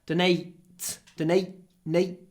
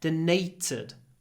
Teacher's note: we get a little pause before the unvoiced T